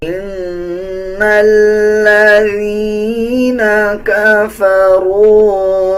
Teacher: نون کے اوپر شد ہے، غنہ کیا جائے گا اور غننے کی آواز کو ناک سے نکالا جائے گا